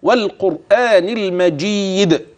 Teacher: في قوله والقران المجيد واو ترقق اللام بعدها كذلك القاف تفخم الراء ساكنه وقبلها مضموم تفخم